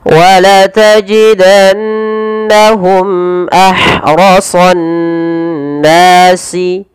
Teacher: Kemudian pada lafal mimati bertemu hamzah, ini kita namakan dengan idhar syafawi, dan yaitu harus dibaca dengan jelas suara mimnya tanpa ada penahanan